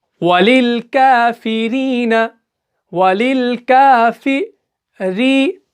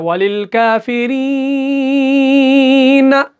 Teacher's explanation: یا ساکن سے پہلے زیر آئی تو ہم اس کو یہاں پر 2 سیکنڈ تک کھینچتے ہیں